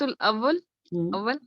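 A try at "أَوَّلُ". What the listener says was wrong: اولو, اولو پڑھیں گے نا, لاسٹ لیٹر. ساکن جو ہوتا ہے نا اول, وہ اردو میں ہوتا ہے. اول بولیں گی نا تو وہ آپ کا اردو کا لفظ بنے گا.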